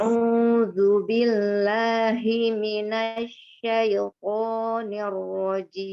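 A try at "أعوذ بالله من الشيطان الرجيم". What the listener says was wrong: Ya, hi-nya pendek ya. Bismillah. Hi-nya tidak terayun. A'udzu billahi minasyaitonir rajim. Hi-nya pendek ya. Billahi minash langsung.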